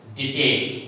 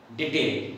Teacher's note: An iamb, an unstressed first syllable which is followed by a stressed syllable.